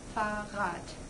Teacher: Fahrrad, here the first R is the vocalic one because it's at the end of the syllable, and the second one is the consonantal one because it's at the beginning of the syllable. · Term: vocalic R